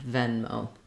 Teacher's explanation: just make sure that you have a diphthong O at the end